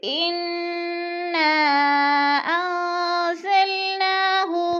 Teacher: انا پہ مد بھی ہے، مد منفصل، حروف مدہ کے بعد حمزہ دوسرے کلمے میں ہے تو مد منفصل ہو رہی ہے، یعنی 4 الفی مد ہے، 4 الف کے برابر کھینچ کر پڑھنا ہے۔ جیسے انا انزلناہ، ان پہ جو ہے اخفا ہو رہا ہے، نون ساکن کے بعد زا حروف اخفا میں سے ہے تو اخفا کریں گے، ناک میں آواز لے جائیں گے۔